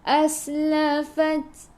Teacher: Ta, sifat hurufnya hamas, kena ada sedikit sahaja angin